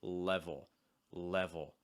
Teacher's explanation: the front of my tongue is not making contact with the top of my mouth instead it's doing the opposite it's actually lowering to the bottom of my mouth and the back of my tongue is rising slightly so again it's not level it's level level and this is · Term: dark l